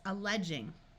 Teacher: this G followed by an E uses its soft sound of J